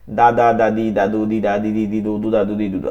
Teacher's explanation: দালটা জিহ্বার আগা সামনের উপরে দুই দাঁতের গোড়ার সঙ্গে লাগায়, গোড়াতে গিয়া লাগবে।